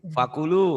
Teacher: bacanya fakulu, ku-nya pendek, Fakulu. yang panjang lu-nya.